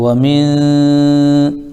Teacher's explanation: من یہاں پر بھی اخفا کا قاعدہ پایا جا رہا ہے. نون ساکن کے بعد حروف اخفا میں سے شین آ رہا ہے تو ایک الف ناک میں روکیں گے آواز کو ہم